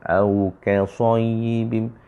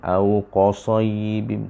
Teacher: kita menukar huruf kaf dengan qaf sebab dia dekat makhraj dia.